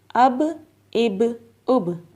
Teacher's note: اب با کے اوپر جزم ہے اور با جو ہے حروف قلقلہ میں سے ہے، تو اس لیے ہم با کو ہلا کر پڑھیں گے۔